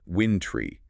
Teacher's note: >> The challenge here is making sure that try ending does not get reduced to a schwa. It should be pronounced winintry, maintaining that clear long a sound.